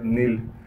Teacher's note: नून को आगे लाम साकिन से मिला देंगे। नून लाम ज़ेर निल।